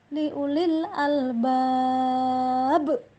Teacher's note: Sementara ya itu diwakafkan, maka yang seperti ini adalah hukum tajwid dinamakan dengan qalqalah kubro, yaitu dibaca dengan getaran yang kuat